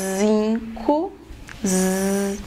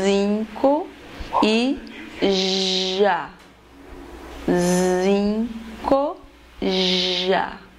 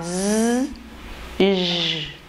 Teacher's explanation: As cordas vocais vão estar unidas, a glote vai estar fechada e o ar que vem dos pulmões passa com vibração. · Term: sons sonoros ou vozeados